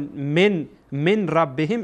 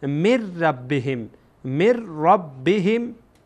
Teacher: نون در اینجا ساکنه و بعد از این نون ساکن هر گاهی که از حروف ادغام بیایه گویای که نونی در اینجا وجود نداشته یعنی ادغام میشه داخل میشه در میم با را داخل میشه